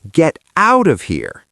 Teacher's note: The stress is on out.